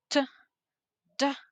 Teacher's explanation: complete closure of airflow, nasals, n, n, airflow through the nose, fricative, fricative like z or z, narrowing of airflow, laterals like l, l, airflow around the side of the tongue, approximates r, r, r, tongue close but not fully touching. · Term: plosive stops